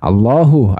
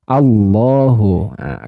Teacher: hukum bacaan apa tadi lam tafhim sebab diawali harakat fathah